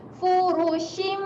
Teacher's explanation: Rapatkan bibir dan dengung sebanyak 2 harakat. Furushim. Nak bunyi shim 2 harakat. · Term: mim iqlab